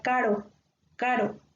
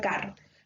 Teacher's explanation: Mientras que la doble R se va a pronunciar más fuerte